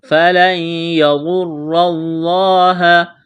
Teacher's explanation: نون ساکن کے بعد یا ہے، نون کا یا میں ادغام کریں گے، یہاں پر ادغام کا قاعدہ جاری ہوگا، غنہ کریں گے، غاد کو موٹا کرنا ہے، را کو موٹا کرنا ہے، لفظ اللہ کے نام سے پہلے زبر ہے، لفظ اللہ کے نام کو موٹا کرنا ہے۔